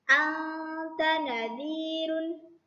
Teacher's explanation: samar, tipis, dan dengung 2 harokat ya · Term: ikhfa hakiki